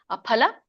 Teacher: ಫ ಎರಡು ತುಟಿ ಹತ್ತಿದಾಗ ಬರುವಂತ ಫ ಹೇಳ್ಬೇಕು